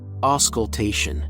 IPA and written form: ˌɔːskəlˈteɪʃən (auscultation)